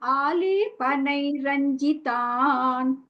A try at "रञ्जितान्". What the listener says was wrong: ரஞ்சிதாலாம் இல்ல, ரஞ்சிதான், ச போடுங்க.